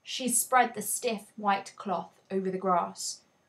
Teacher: there are three stressed syllables that make the cloth seem even stiffer